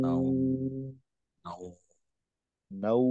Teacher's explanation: মাদ্দে লিন যখন আমরা পড়বো ওই সময়টায় ওয়াও এর উচ্চারণটা দীর্ঘ উর মতো হবে